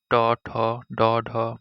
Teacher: উচ্চারণের সময় জিহ্বার অগ্রভাগ উল্টে গিয়ে মাড়ির ওপরের অংশ বা মূর্ধাতে স্পর্শ করে, তাই এগুলোকে মূর্ধন্য বর্ণ বলা হয়।